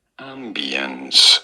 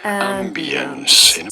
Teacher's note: You do want to stress on the first syllable.